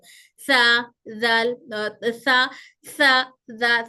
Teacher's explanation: हवा समाए मतलब इनमें हल्की सी हवा आ रही, और ये हमारी जबान के ऊपर के दांतों के किनारे को टच करते हुए जबान थोड़ी सी बाहर निकलती है